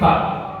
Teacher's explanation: Ditinjau dari pangkal lidahnya tidak boleh terangkat. Gak boleh tebal mengangkat. Ditinjau dari lengket atau tidaknya lidah, maka dia tidak boleh lengket. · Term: huruf fa